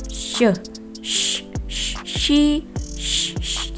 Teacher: Jadi bagian lidah itu bertemu dengan alveolar ridge belakangnya gitu. Nah, seperti ketika kita membunyikan suara sh, gitu. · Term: post alveolar